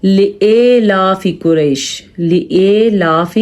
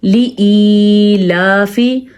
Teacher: लिलाफि कुरैश, लिलाफि ये गलत है, या पढ़ा जाता है लिलाफि कुरैश, नहीं। अलिफ के बाद या है तो ये या मद्दा है, इसको खींच के पढ़ेंगे